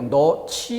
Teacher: 어미 지가 와서 히읗과 결합되며 거센 소리로 너치 이렇게 소리가 나는 거죠